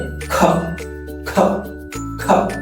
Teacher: Tissue নেওয়ার পরে খ খ খ, যদি এই বাতাসটা ঝাটকা লাগে তাহলে মনে করতে উচ্চারণটা সঠিক আছে। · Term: অ্যাসপিরেটেড